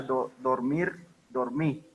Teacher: La pérdida de la R final absoluta, dormir, dormí.